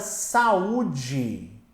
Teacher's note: A palavra saúde, minha gente, ela vai ser uma palavra acentuada, veja bem, porque você tem aqui, ó, uma separação entre o a e o u. E o u tá sozinho na sílaba.